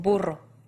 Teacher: For this consonant, your tongue goes right up against your alveolar ridge. It softens a bit to allow air to come through, and as that air comes through, it will vibrate your tongue up and down against that ridge. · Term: trilled R